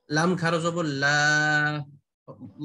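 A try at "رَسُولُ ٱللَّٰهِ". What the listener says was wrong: হ্যাঁ, লা হবে কেন? ল হবে।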